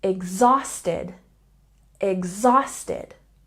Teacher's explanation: And exhausted has a stress on the second syllable.